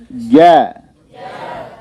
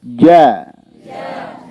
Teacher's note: Jangan sengaja ada hams, ya. Dia tidak ada percikan.